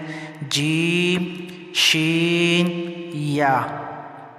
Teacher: इनका मकरज है जबान के दरमियान और ताल्लुक के दरमियान से अदा होते हैं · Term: हुफ शजरिया